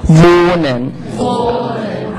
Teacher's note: you don't have to pronounce this H. You don't hear it. It just tells Germans the vowel will be long. So this here, it's not really pronounced, but it makes the vowel long.